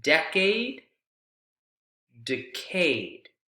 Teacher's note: Stress was on the de in decade.